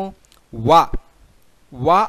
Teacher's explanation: వా అనే అక్షరం చదివేటప్పుడు దంతములు టచ్ అవుతూ ఉంటాయి, పెదవులు కూడా టచ్ అవుతూ ఉంటాయి. కాబట్టి ఆ దంతములు మరియు పెదవుల సహాయంతో వా అనే అక్షరము పలకబడుతూ ఉంటుంది. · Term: దంత్యోష్టియము, దంత్యోష్ట్యము